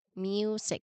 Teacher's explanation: Notice that in the music, the U sound is actually a combination of J and U.